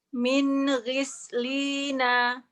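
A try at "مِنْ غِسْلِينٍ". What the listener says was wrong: Min ghislina. Ghisli nggak boleh, gisli nggak boleh keputus ada.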